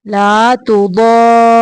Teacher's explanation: ضاد کو را کے ساتھ تھوڑی دیر ملانا ہے